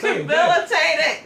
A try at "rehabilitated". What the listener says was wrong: Did you say the H in habilitate? Say habilitate. Let's break it down.